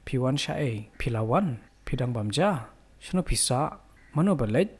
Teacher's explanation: there's a continuous raise of the last word in each of these questions